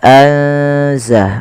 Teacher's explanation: memasukkan nunnya atau menyamarkan nunnya kepada huruf zai. Ya, anza langsung kepada makhraj daripada huruf zai. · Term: ikhfa